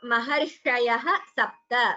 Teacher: visarga followed by sa would become sakara sandhi